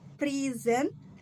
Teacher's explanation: with stress on the first syllable is a meaning a gift. prison with stress on the second